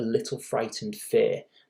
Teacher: So she's a little frightened fair, and the alliteration there of the F sound, the fricative F sound, gives you the impression of gentleness.